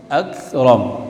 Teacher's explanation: Kaf bukan huruf qalqalah tapi ada desisnya, ada hams.